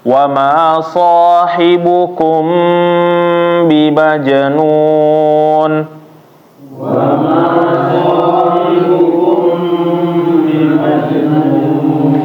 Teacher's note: mim sukun ketemu ba harus ditahan. Jangan langsung pindah. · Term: ikhfa